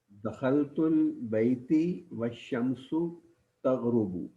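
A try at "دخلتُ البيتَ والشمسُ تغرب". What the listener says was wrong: البیتی کے نیچے زیر آپ کیوں پڑھ رہے ہیں؟ نہیں، ترجمہ کیا کر رہے ہیں آپ؟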